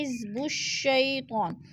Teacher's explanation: یا ساکن سے پہلے شین کے اوپر زبر ہے تو ادھر یالین، یالین کو ہم نے لمبا بھی نہیں کرنا اور جھٹکا بھی نہیں دینا